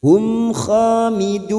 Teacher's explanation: Fa idza hum mim sukun bertemu kha idhar safawi. Mim sukun dibaca jelas tanpa mendengung.